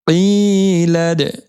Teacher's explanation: یا مدہ کی وجہ سے قاف کو کھینچیں گے اور لام کو جزمہ والی دال کے ساتھ ملا کر پڑھیں گے. درمیان میں الف کو ہم نے نہیں پڑھنا, اور دال حروف قلقلہ میں سے ہیں تو یہاں پر اس کی آواز لوٹے گی, قلقلہ ہوگا.